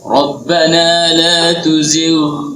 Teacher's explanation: Jangan langsung dilebur ke dalam qaf. Itu ghain ketemu qaf. Ghain itu ujung tenggorokan, qaf itu pangkal lidah. · Ghain itu ujung tenggorokan, qaf itu pangkal lidah. Berarti dua huruf ini tidak sama tempat keluarnya. Satu di leher, ya, satu di lidah.